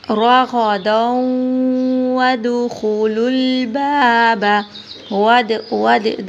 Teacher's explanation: دال پہ قلقلہ کریں گے